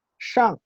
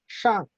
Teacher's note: la SH, shang, que es con la lengua arriba en el paladar